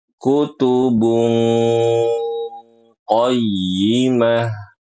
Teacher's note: makhraj huruf qof-nya ya keluar dari pangkal lidah. atau lidah bagian paling belakang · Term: makhraj huruf qafnya